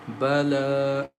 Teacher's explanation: Lam has standing fatha on it, so we stretch the sound for two counts as bala.